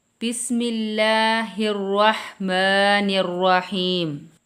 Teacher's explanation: جب بھی اللہ کے نام سے پہلے زیر ہوگی تو کیا ہے، ہم اس کو، اللہ کے نام کو باریک پڑھیں گے